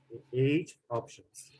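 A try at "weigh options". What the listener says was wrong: There is no T, okay? It's way options. Way options. say weight, you're talking about the noun. For example, my weight nowadays it's about 94 kilograms. Okay, when there is the T in the end, Claude. this one is the verb.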